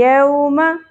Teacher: یوم و ساکن حرف لین میم کی زبر زیادہ نہیں کھینچی جائے گی